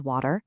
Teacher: In American English, when a T is between 2 vowels, it often softens into a really quick D sound.